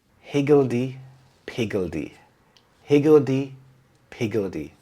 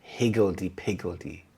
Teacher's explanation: The stress is on the first syllable higgledy-piggledy.